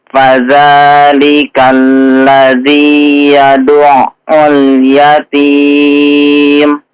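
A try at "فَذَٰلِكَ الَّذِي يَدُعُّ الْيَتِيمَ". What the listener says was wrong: Ya, perhatikan di huruf ainnya ya. Huruf ain yang ditasydidkan. Yadu'u. Nah, jangan dimatikan ya suara apa itu ya? Suara ainnya. Yadu'a. Ya, kalau mau kita panjangkan ya. Jangan yadu'u. La, tidak mati ya. Tapi dilanjutkan.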